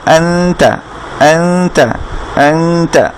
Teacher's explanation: নুন সাকিনের পরে যদি তা আসে, তা হারফটা আসে, তখন এই নুনটাকে আমরা গোপন করে ফেলবো, আনতা, আনতা, আনতা, এভাবে পড়বো, অ্যাং, অ্যাং গুণনা করে, তারপরে তা, অ্যাংতা। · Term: ইকফা